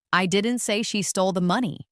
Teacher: Now, let's emphasize the word she. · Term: sentence stress